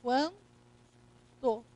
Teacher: O N aqui está apenas para indicar a nasalização do vocábulo.